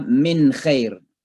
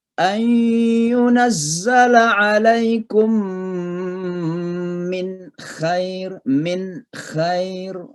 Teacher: Jadi nunnya harus jelas, namanya juga izhar, ya, jelas bacanya.